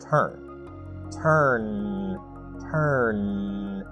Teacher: Notice that you feel a vibration on the final n sound. That means that it is a voice sound.